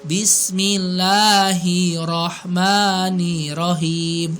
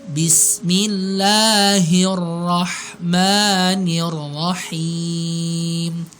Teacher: Jadi hir, nir, gitu langsung gitu ya. Jadi jangan ada jeda antara hir dengan nirnya. Ya, antara h dengan ro, antara ni dengan ro-nya. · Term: tasydid